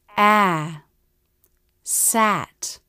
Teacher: when a is in a stressed syllable the vowel will go up and come down in pitch